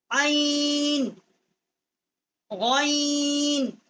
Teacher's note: عین جو ہے واسطے حلق سے اس کا مخرج ہے